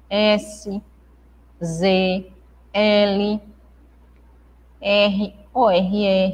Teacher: alveolares pronunciadas pelo contato da língua com alvéolos dos dentes Ou seja a parte de trás dos dentes s z l